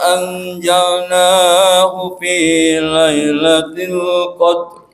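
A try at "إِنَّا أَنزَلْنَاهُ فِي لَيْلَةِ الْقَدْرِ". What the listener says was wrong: Punten, gunnahnya ditahan sedikit lagi. Inna, lagi.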